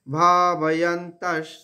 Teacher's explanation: সেই বিসর্গর উচ্চারণ এখানে তালবস্য হবে, অর্ধেক তালবস্য